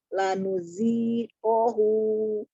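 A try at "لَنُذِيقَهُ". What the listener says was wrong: Zalnya ya, diingat-ingat makhorijul huruf zal, ujung lidahnya ada di ujung gigi sari bagian atas tidak tertukar dengan zai. Lanudziqahu.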